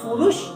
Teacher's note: ایک دم آواز روک دیں گے، کلکلا نہیں آنا چاہیے